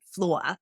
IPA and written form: flʊɐ (floor)